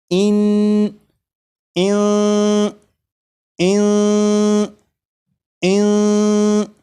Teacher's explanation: जब आप ज़बान तालू से नहीं लगने देंगे तो फिर यहाँ पर इख्फा हो जाएगा। اخفا مطلب نون ساکن کی جو آواز ہوگی وہ ناک میں چھپ جائے گی، اس طرح کہ اس میں غنہ بھی ہوگا۔ جیسے پہلے میں اسے پڑھوں گا اس طرح کہ زبان تالو سے لگے گی، اور اس کے بعد پھر 3 مرتبہ اس طرح پڑھوں گا کہ زبان تالو سے نہیں لگی ہوگی، جیسے ان ان ان ان۔